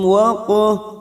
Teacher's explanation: huruf qaf sukun yang mati asli di tengah kalimat qalqalah sugroh. Jangan lupa dipantulkan.